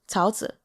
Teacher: It's Tao Zi. Tao, second tone